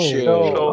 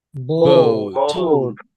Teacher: এই ও কখনো একা থাকে না, ও থাকলে এটার সাথে উ চলে আসে আর কি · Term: ও ডিপথং